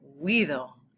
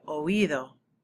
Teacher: If it wasn't there, you'd say huido. It would form a diphthong. Those two vowels would blend together. So they want you to say oído.